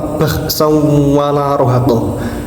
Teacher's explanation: Di situ ada tanwin bertemu dengan wawu sehingga bacanya harus melebur serta mendengung. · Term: idgham bighunnah